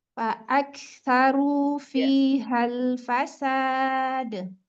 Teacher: kalau bisa jangan ada jeda umumnya ketika kaf sukun ke sa. Fa'aktsaru dia langsung.